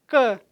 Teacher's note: K, velar, porque é produzido aqui, ó, nessa parte posterior do trato vocálico. A parte posterior da língua encosta lá no véu palatino, por isso que é velar. · um som que é oclusivo, velar, desvozeado. K, velar, porque é produzido aqui, ó, nessa parte posterior do trato vocálico.